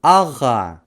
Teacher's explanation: При произнесении данного звука задняя часть языка смыкается с задней частью неба.